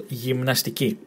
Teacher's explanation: emphasis on the last syllable